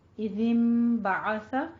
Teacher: ساکن کے بعد جب حرف با آتا ہے تو دونوں کو نون ساکن کو میم میں بدل دیں گے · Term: اقلاب